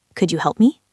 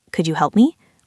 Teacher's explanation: with a flat voice, it sounds a bit annoyed